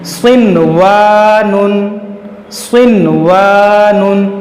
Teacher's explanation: सिनवानुन, यहाँ पर भी देखें स्वाद हुरूफ मुश्तालिया है, इसको हम मोटा करेंगे, और नून के बाद हुरूफ यरमलून है, वाव उसी कलमे में है, इसलिए यहाँ पर जो है यहाँ पर इदगाम नहीं बल्कि इजहारे मुतलक होगा, यानी इस नून को जाहिर करके पढ़ेंगे, गुन्ना नहीं करेंगे